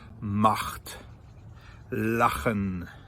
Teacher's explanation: At your throat. And that is a very hard guttural CH. So words like macht, lachen, those are really, really back in the throat.